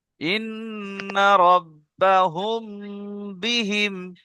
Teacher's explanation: মিম সাকিনের পরে বা এসেছে, তাই মিমকে একালিফ গুন্না সহ পড়তে হবে। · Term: ইখফায়ে শাফাবি